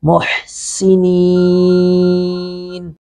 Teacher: सीन पर सिटी की आवाज़ आएगी